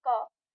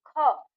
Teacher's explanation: और उसे बोलते हैं फिर ख। तो क की तुलना में ख में हमारे ज्यादा हवा निकलती है मुंह से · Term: महाप्राण